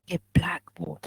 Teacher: So the stress is on the first part, a blackboard